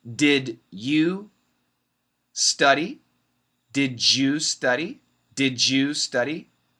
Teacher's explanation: t plus y equals ch and d plus y equals j